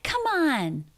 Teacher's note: stress on come come on all smoothly linked together and one arch one thought group ending M links into beginning vowel come on are you kidding